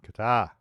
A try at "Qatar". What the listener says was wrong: tar. No, it's tar. Two A's next to each other. It's louder. It's tar. It's not tur. It's tar. It's Qatar. Not Qatar. It's Qatar.